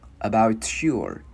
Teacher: Chữ này chữ ua không có chu môi